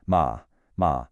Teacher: The third tone is the trickiest. It dips down and then comes back up.